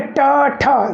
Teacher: जीभ का आगे वाला भाग मुड़ करके और ऊपर वाले तालू के बीचों बीच मूर्धन्य में ठोकर मारता है, तो वो मूर्धन्य है।